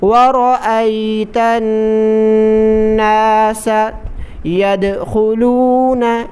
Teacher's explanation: وَرَأَيْتَ النَّاسَ، جس لفظ پر تشدید آ جائے اس سے پہلے والے لفظ کو تشدید والے لفظ کے ساتھ ملائیں گے، تا کو نون کے ساتھ ملائیں کیونکہ نون پر تشدید ہے، اور جب بھی نون پر تشدید آ جائے نون مشدد پر ہمیشہ غنہ ہوگا، غنہ کر کے پڑھیں یعنی ناک میں آواز چھپا کر پڑھیں